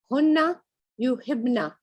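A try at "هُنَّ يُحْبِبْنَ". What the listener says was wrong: No, yeah, the shadda is removed again in the plurals. Like in they all females, even in the plural of the present tense, when there's a shadda, it's removed. And over here, yuhbibna and tuhbibna is removed. And it goes back to the original.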